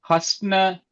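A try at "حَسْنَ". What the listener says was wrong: அப்படி இல்ல, பிரிக்கணும். ஹஸ் ந, ஹஸ் ந. ஓ, சுக்கூன் வந்திருக்குது, சுக்கூன் வந்திருக்குதே. ஹஸ்.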